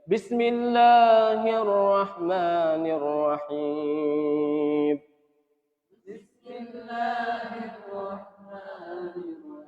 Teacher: Allahnya itu ditinggiin sedikit dinaikin.